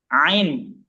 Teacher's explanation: Jadi dia bukan masuk lidah tapi ditenggorokan bagian tengah.